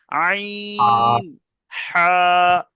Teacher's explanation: হালাকের বা কণ্ঠনালীর মাঝখান হতে উচ্চারিত হয়, মানে এই যে কণ্ঠনালী আছে, এই কণ্ঠনালীর মাঝখান থেকে উচ্চারিত হবে, একদম মধ্যিখান থেকে।